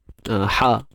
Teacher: Untuk ha pedas tengah kerongkong kita ni.